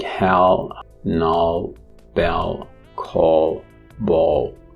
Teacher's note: the main identity of this sound is that it's alveolar the secondary identity is that it's a velarized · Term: dark l